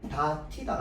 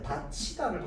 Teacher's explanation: 구개음화에 따라서요 다티다가 아니라 다치다로 발음하는 게 우리 표준 발음법에 맞는 발음법입니다